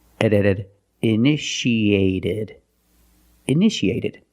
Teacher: The second T is between vowels. So, we pronounce it like a fast D.